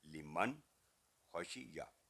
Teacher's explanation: نون ساکن کے بعد اگلا حرف خا ہے جو کہ حروف حلقیہ میں سے ہے، تو نون ساکن کی آواز شارٹ ہوگی ، اظہار کا لول کلیئر 1 سیکنڈ ساؤنڈ، لمن خشیہ، خشیہ